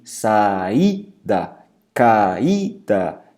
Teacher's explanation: A palavra saída tem hiato em I. Repara que esse I é muito forte, então o hiato tônico incide sobre a vogal I